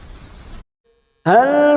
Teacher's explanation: lam sukun hati-hati tawalut, bukan memantul ya, kita hanya masuk